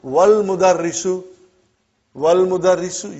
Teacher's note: you did not pronounce Hamza. Okay? Because it's Hamzatul Wasal.